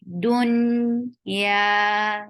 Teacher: Dun, yeah, it's 2 counts long, and you are lifting tongue to pronounce yeah, but you are not touching palate, so yeah will be light, very soft sound